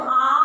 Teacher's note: अब आपने अ बोला तो अ के दुगना समय लगा के आप बोलते हो आ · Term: दीर्घ स्वर